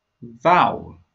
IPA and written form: vaʊəl (Vowel)